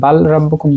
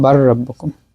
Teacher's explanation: এখানে আমরা বাল রাব্বুকুম বলবো না, বলবো বার রাব্বুকুম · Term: ইদগাম